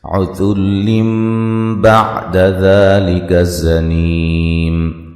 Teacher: ذال کو نرم ادا کریں گے، زا کو سختی سے اور سیٹی سے ادا کریں گے